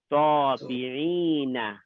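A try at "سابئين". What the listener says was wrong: There's no ayn, it's a hamza.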